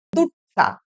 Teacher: হ্রস্ব ই এই স্বরধ্বনি লুপ্ত হয়ে ঝাড়খণ্ডী উপভাষায় এটাকে বলা হয় দুট্টা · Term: ব্যঞ্জন দ্বিত্ব